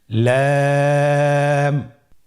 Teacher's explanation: পরবর্তী হরফ লাম। লাম হরফটি উচ্চারণের ক্ষেত্রে অবশ্যই বারিক হবে এবং তিন আলিফ টেনে পড়তে হবে